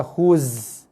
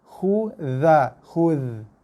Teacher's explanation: Jaga za nipis je hujung lidah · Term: zal